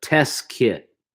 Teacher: yeah, try not to pronounce I mean, you have to say the T, the second T in test